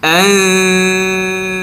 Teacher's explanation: কোন হরফের গুন্না করলাম তা তো এখন গুন্না করারত অবস্থায় আমার জিহ্বাটা কোথায় চলে যাবে তায়ের মাখরাজের ওইদিকে চলে যাবে জিহ্বার আগা সামনের উপরে দুই দাঁতের আগায় চলে যাবে